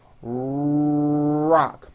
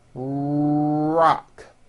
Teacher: notice how my lips are coming forward and my tongue moves back in my mouth and I push out the r sound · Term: American R sound